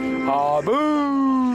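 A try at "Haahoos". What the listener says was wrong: That's not Harbour, it's actually Hahoo.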